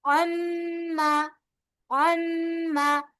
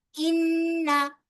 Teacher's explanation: नून और मीम अगर मुशद्दद है तो इन पर एक अलिफ की मिकदार के बराबर गुन्ना किया जाएगा